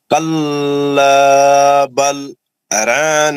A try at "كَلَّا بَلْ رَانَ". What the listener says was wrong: ایک ہمارے رانا نہیں بولنا کبھی. را کو موٹا پڑھنا ہے نا, را پہ زبر ہے نا, اور مد اصلی ہے نا رونا. کلا بل رونا مد اصلی بھی کرنا ہے نا. رونا کلا بل رونا. آپ اتنے لوگوں کو سنے, میں اتنے بار پڑھا, مولوی صاحب پڑھے, پھر آپ آگے رانا کر دیے نا.